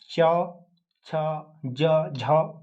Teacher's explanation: जो तालु के पिछले भाग से हमारा जो है जीभ के पिछले भाग से हमारा क्या है? तालु का स्पर्श होता है इन व्यंजनों को बोलने में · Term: तालव्य व्यंजन